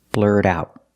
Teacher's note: the T in blurt is pronounced as a fast D because it's after an R and before a vowel